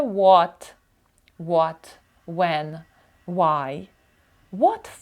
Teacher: От наприклад What When Why всі вони слідують цьому правилу що якщо у нас буква H іде після w вона є глуха Вона просто викидається